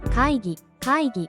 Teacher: 카이는 짧게 기는 목을 울려 발음합니다.